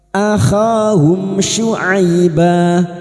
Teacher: Huruf syin makhrajnya ada pada wastul lisan atau tengah lidah.